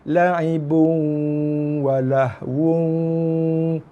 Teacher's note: Masuk dalam waw berserta dengung, masuk dalam waw berserta dengung tanpa tekanan. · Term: idgham ma'lunah